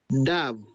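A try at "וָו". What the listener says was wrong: Again, is it a Dalet or is it a Vav? It's the Vav sound. It makes the V like victory or Vizuri. So it's Vav.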